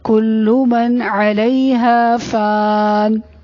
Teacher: عین کی آواز حلق سے ادا ہوگی · فان میں فا کو تھوڑا سا لمبا کرنا ہے